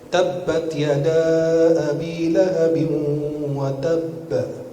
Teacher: Bukan ditahan. Wa tab, enggak ditahan, lepas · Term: qalqalah